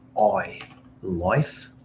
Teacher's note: there's very subtle differences in how Canadians pronounce their vowels. So, instead of life, like the I sound, it's oi, life. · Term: Canadian accent